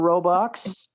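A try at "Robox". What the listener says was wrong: Yeah, but there's no L. Roblox because it's a box.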